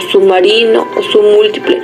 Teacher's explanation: se pronuncia una B impulsiva muy débil y breve, la cual muchas veces se convierte en M y se asimila a la M, que la sigue y forma con ella una sola articulación que es un poco más larga que la M normal y se reparte entre dos sílabas continuas.